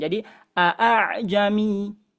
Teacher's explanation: Tahqiqul hamzataini artinya dua hamzah ini dijelaskan